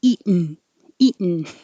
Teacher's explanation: So the eaten by itself, we drop the T.